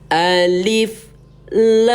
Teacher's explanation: La ini ayah bunda panjangkan dulu enam ketukan ya. Mad enam panjang enam ketukan. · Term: Mat 6